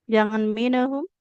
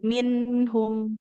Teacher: Nunnya dialirkan, jangan memantul.